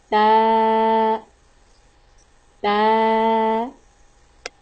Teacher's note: The letter of Ta pronounced from tip of the tongue touching root of the front two teeth.